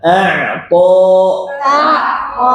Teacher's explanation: Ain tipis, ta tebal.